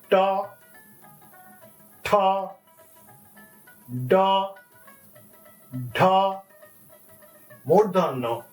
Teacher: All the sounds are coming from the tip of your tongue touching the front side of the roof of your mouth. That is palate.